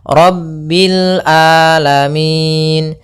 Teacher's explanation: hati-hati jangan sampai merubah huruf ainnya menjadi Hamzah banyak yang terjadi kesalahan dalam pelafalannyaitu meng dengan Alif atau Hamzah